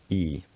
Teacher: it loses its consonants and the vowel lengthens to compensate